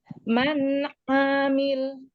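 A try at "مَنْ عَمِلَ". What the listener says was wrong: Panjang pendeknya. Ainnya jangan dipanjangkan, pendek ya.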